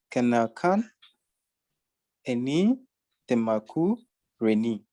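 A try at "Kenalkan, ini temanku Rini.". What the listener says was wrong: Not temaku, but temanku.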